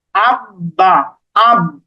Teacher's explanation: প্রথমের বটা কিন্তু আ এর সাথে ধরে নিচ্ছি তারপরে বা এইটা আলাদা করে উচ্চারণ করছি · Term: তাশদিদের উচ্চারণটাও